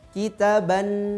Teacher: bunyi nun sukun di dalam tanwin itu sangat jelas terdengar